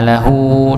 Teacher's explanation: Alahu lahu di sini juga dipanjangkan dua harakat sebagai mad asilah ya